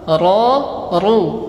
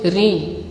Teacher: kalau huruf ro dibaca tebal ketika fathah dengan dhamma, ro, ru. Adapun kasro tipis